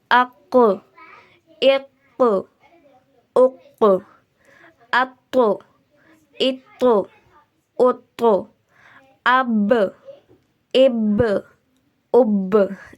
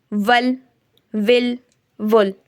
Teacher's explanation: اس میں آپ کی آواز ٹکر کھا کر واپس آتی ہے